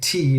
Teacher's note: you're not using just the tip of your tongue you are using the full front part of your tongue